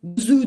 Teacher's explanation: Bu Ö sesiyle W'nun dudaksılaştırmasının birleştirilmesiyle oluşmuş bir ses